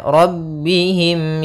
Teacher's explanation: Ila yaitu Madi panjangnya dua harakat yaitu fathah bertemu Alif rabbihim r-nya tebal karena dia Ro berharakat fathah